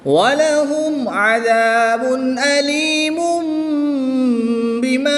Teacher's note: تنوین میں اقلاب ہوگا، یعنی کہ تنوین کو میم سے بدل کر غنہ کر کے پڑھیں گے۔